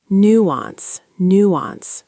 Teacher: Nuance. Stress on the new.